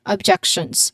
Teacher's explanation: As you've noticed, as you can see on the um IPA transcription, we use a buzzing sound here in objections. So there's the final S sound is pronounced as a Z